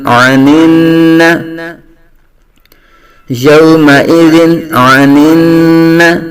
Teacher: کے بعد حروف حلقی میں سے عین آنے کی وجہ سے یہاں تنوین میں اظہار حلقی ہوگا یعنی غنہ نہیں کریں گے